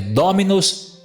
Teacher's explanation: a sílaba mi é uma sílaba breve. Como é uma sílaba breve, não pode recair um acento na sílaba breve.